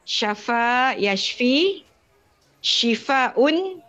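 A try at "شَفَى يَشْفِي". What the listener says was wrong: Betul.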